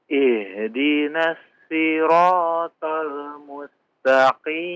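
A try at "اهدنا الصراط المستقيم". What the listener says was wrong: Ya, shadnya dipertebal ya. Ihdinal shoi. Shoi, coba gimana caranya itu biar tebal?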